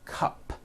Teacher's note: It ends with an unvoiced P. P, p, cup. P, p.